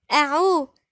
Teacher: قل همزة مرققة. أعوذ نطلع لساننا في الذال